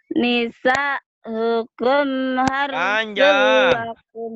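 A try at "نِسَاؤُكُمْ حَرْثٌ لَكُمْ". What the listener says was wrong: Nisanya panjang kan ada mad wajib mutasil.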